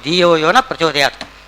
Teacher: ದಿಯೋ ಆಮೇಲೆ ನಹ ವಿಸರ್ಗ ಹೊರಟು ಹೋಗಿಬಿಡುತ್ತದೆ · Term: ವಿಸರ್ಗ ಹೊರಟು ಹೋಗಿದೆ